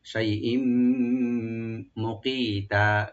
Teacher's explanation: শাইইম এখানে তানবিনের পরে মিম আসছে, এখানে ইদগাম উইথ গুন্না। শাইইম মুকিতা, কাফটাকে রাইট দিবেন, আর তার উপরে যে তানবিনের উপরে আমরা ওয়াকফ করবো, এক আলিফ টেনে ছেড়ে দিবেন।